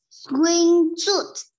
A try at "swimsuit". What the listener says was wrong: No, not swing. Không phải swing. Yeah, swim. Swim. Swim Swim suit.